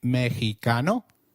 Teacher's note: Did you notice that the X in Mexico is pronounced as H? While X is usually pronounced as X inflexible, it is pronounced as a throaty H in the words Mexico, Mexico, and Oaka, which is a state in Mexico.